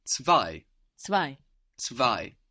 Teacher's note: We will find the English T turning into a German Z, and this is what we see in two, which is of course spelled T-W-O in English, and zwei in German. We have the Z like TS, we have the W like a V, and then we have that EI giving us I, zwei. So this is two, like the number 2 in German.